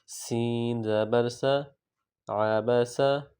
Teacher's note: یہ صاد نہیں ہے سین ہے، سیٹی کی آواز بھی پیدا کریں گے